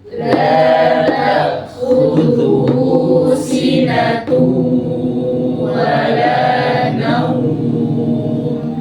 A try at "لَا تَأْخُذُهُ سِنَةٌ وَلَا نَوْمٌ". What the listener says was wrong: Jangan naum. Intonasinya perhatikan, jangan naum. Ikhtilas dia. Naum. Jangan tahqiq.